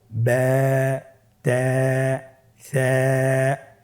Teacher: এখানে যেহেতু আলিফ হরফটি পাতলা হরফের পরে এসেছে তাহলে আলিফকে পাতলা করেই পড়তে হবে